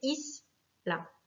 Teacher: Le mot isla, pareil, finit par une voyelle, un A, donc c'est la première syllabe qui va être accentuée